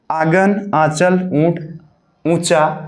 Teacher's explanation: इसमें मुंह से अधिक तथा नाक से कम सांस ली जाती है। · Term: अनुनासिक